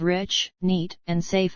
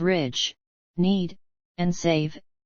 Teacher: the vowels of rich, neat, and safe are noticeably shorter than the vowels of ridge, need, and save